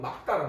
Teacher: 리을 기역 같은 경우는 기역으로 발음해야 되니까 정확한 발음은 막다란 말이야